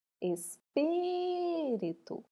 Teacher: Então, o pi nós pronunciamos um pouco mais alto. A sílaba pronunciada com mais intensidade é chamada de sílaba tônica.